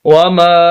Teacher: یہ چھوٹی مد ہے، اس کو بنسبت بڑی مد کے کم کھینچنا ہے